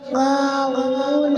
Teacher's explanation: واو کے اوپر الٹا پیش ہے، الٹا پیش برابر ہوتا ہے واو مدہ کے، اس لیے الٹا پیش کو ایک الف کے برابر کھینچ کے پڑھیں گے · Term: الف مدہ